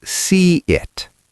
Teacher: The y appears when your mouth is wide like a smile. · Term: y sound